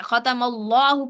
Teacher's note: اللہ کا لام موٹا پڑھیں گے کیونکہ اللہ کے لام سے پہلے زبر آ گیا